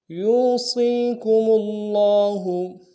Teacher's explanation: یوصیکم اللہ، یو میں یا کو واو مدہ کے ساتھ ملانا ہے، واو مدہ میں ایک الف دال میں کھینچیں گے، صاد کو یا کے ساتھ ملائیں گے، یہ مدہ ہے، صاد کو موٹا ادا کریں گے، اس کو بھی ایک الف دال میں کھینچیں گے۔